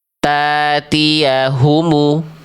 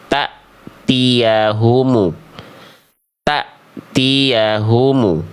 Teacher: Salahnya karena hamzah sukunnya dibaca panjang. Tuh harusnya hamzah sukunnya dibaca putus.